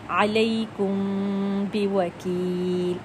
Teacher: ناک میں سے ایک خفیف سا ہمیں غنہ کا ساؤنڈ سنائی دیتا ہے۔ اگر میں ناک کو بند کر لیتی ہوں، تھوڑا سا دباتی ہوں، تو آپ کو ساؤنڈ تھوڑا سا ڈیفرنٹ سنائی دے گا۔ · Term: اخفاء شفوی